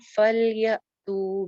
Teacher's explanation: یا جھٹکے کے ساتھ آئے گا حمزہ ہے ساکن